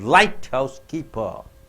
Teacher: The first syllable is stressed.